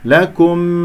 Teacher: لكم كاف مضمومة نضم الشفتين ومرققة، ميم مظهرة، لكم اسمع الميم مظهرة